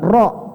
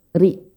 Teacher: Kalau tipis, ri, ro, ri, ro, ri. Kalau ri itu lebih ke arah tipis, seperti senyum.